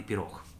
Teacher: «х» – фрикативный, который в слабой позиции дает нам оглушенный «х»